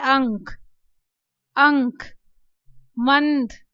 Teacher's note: जब ये अनुस्वार शब्द के बीच में है तब आप देखिए इसका उच्चारण नासिका के द्वारा हो रहा है